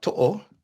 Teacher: they put glottal stops in where nobody else puts glottal stops in